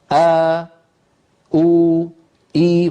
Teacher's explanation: فيبدأ الصوت بوترين منقفلين ثم يبتعدان هكذا، أو إي، وهكذا يكون مخرج الوترين في الهمزة. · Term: الهمزة متحركة